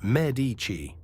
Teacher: Italians say Medici. The stress on the first syllable.